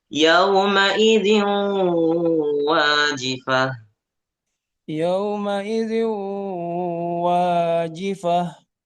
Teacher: ada dengungnya ada suara sengau dari hidung